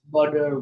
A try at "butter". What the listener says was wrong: Well, we need to work on the vowels a little bit. But the T, you definitely have the D, the T down.